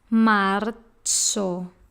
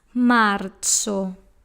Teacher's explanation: The letter Z has a t sound, the TS sound.